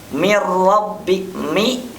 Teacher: Mir rabbi, mi, nun sukun, min rabbi ketemu dengan ra. Jadi mir rabbi tidak menggunakan gunnah tentunya. Jadi tidak ditahan tentunya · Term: bila gunnah